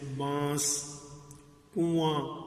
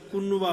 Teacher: تو اس میں آواز ناک میں جا رہی ہے